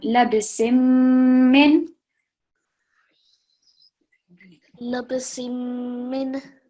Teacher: slightly pausing and a bit of a nasal sound